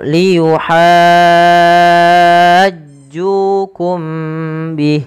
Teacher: ditahan suara mimnya karena dia ikhfa syafawi